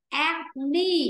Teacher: Là trong âm nó sẽ rơi vào âm tiết thứ nhất. Rơi vào chữ A.